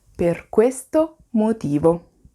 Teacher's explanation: Fate bene attenzione alla pausa che pongo fra questo e motivo, ma al fatto che non c'è una pausa fra per e questo